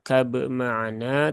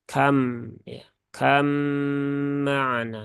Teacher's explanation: huruf yang pertama itu sepenuhnya dihilangkan berarti ee sifat-sifatnya sudah betul-betul hilang sehingga langsung masuk ke huruf mim ya masuk ke huruf mim sehingga ini bukan dibaca Kab maana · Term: idgham yang Kamil, idgham kamil